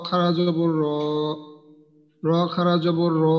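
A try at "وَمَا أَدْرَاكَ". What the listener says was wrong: তো এক আলিফে র এতখানি টান হলো কেন?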